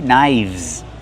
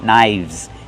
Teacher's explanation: The F changes to a V sound.